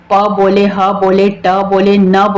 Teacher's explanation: आप कोई भी वर्ण बोलेंगे या कोई भी शब्द बोलेंगे तो वर्ण जितने भी आप उच्चारण करेंगे, चाहे आप प बोले, ह बोले, ट बोले, न बोले, सब में अ का उच्चारण आ रहा है, वो अपने आप ही रहता है, बाय डिफॉल्ट जो है अ का उच्चारण है, तो इसलिए इसको क्या कहा गया है, केंद्रीय स्वर कहा गया है।